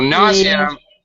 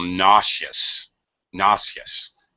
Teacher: nausea, we use a Z sound. Nauseous, we change it to an SH sound.